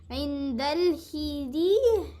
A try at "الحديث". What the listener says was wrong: No, not he. It's حياة فتحة.